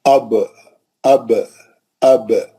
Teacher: با جو ہے ہونٹوں کے گیلے حصے کو لگانے سے ہے نا نکلتا ہے با. اب اب اب.